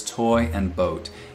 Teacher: both of these vowel sounds in the words toy and boat in most accents of english they're diphthongs they start in one spot and they move to another